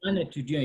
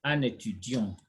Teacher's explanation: There's no break here. No break between N and E. So you say un étudiant, you slur that, okay? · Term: liaison